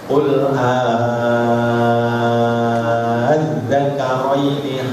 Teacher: Karena ini namanya mad faratun, yaitu kalau ada hamzah istifham bertemu al, itu boleh dibaca ibdal. Ibdal itu hamzah kedua dibaca alif, panjangnya 6 harokat.